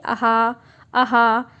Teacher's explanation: कोई चीज़ टच हो रही है कहीं, कोई पार्ट में, कोई जीव में कुछ टच हो रहा है, कुछ नहीं हो रहा, आपकी केवल आवाज़ गले से निकल रही है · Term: विसर्ग